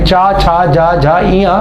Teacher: चा देखो ये जो तालव्य ध्वनियां होती हैं ये क्या होती है, चा वर्ग की ध्वनियां, चा वर्ग की ध्वनियां जो होती हैं वो सभी क्या होती हैं, तालव्य होती हैं। चा वर्ग की ध्वनियां क्या होती है, तालुव्य, यानी चा छा जा झा इया ये सारी क्या होंगी, तालुव्य होंगी।